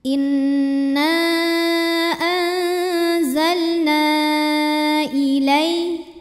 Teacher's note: Hamzahnya yang i pada kata ilaika. Maka nun dipanjangkan boleh 4 boleh juga 5 harokat. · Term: mad jaiz munfasil